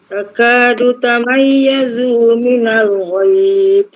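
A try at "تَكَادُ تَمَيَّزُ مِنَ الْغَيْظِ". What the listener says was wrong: Zu tak panjang. Zu.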